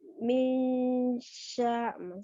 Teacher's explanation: Ucapin pertama nun kan ujung lidahnya kan ada di atas ya, kemudian mengalir ke huruf shin ya. Minsya. Kan hampir sama ya, kalau misalnya secara makhraj nun dengan shin itu sudah hampir sama.